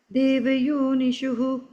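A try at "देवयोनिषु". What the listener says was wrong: first line దేవ యోనిషు there is no విసర్గా I think you said షు నో విసర్గా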